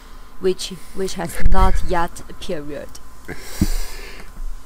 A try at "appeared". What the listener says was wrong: But let's start with the pronunciation of appeared. It's appeared, not a period.